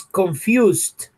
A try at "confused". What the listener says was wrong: La ed in English never, nunca suena ed. Esta ed nunca se va a pronunciar. Nunca.